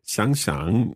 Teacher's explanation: And there, can I just double check that your tones, because you had previously said 想想, that's a third tone and a third tone, but the first third tone becomes the second tone